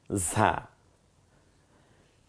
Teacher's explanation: ঝিঝি আওয়াজে বাতাসটা বেরিয়ে আসবে, জিব্বাটা খানিকটা পাতলা হয়ে যাবে ভেতরে